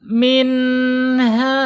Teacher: Nunnya harus dibaca jelas. Awas jangan sampai nunnya dibaca dengung atau samar ya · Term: idhar khalqi